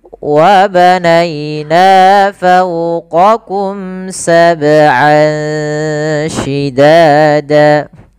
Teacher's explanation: bacaan nainya, ai-nya lembutkan. Fau monyongkan fauqa